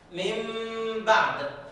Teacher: اقلب هذه النون إلى ميم مخفاة